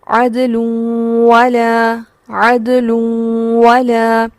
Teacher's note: تنوین کے بعد جو حرف ہے وہ واو ہے اور ادغام مع الغنہ ہوگا